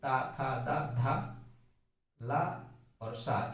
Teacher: ता, था, दा, धा, ला और सा, इनका उच्चारण स्थान क्या है? दंत है। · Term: दंत्य वर्ण